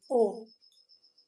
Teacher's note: इसके उच्चारण में आप कंठ का भी प्रयोग कर रहे हैं और ओष्ठ का भी, ओ, ठीक। इसलिए इसका उच्चारण स्थान कंठोष्ठ है।